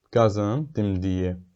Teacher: Gördüyünüz kimi enən formada gedib amma ikinci heca birinci hecəyə nisbətən daha qüvvətli formada deyilib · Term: vurğu